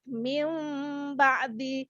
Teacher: Nun sukun tersebut digantikan dengan huruf mim yang disamarkan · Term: iqlab